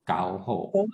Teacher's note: And then, of course, we have our ho, our low tone ho, 6th tone.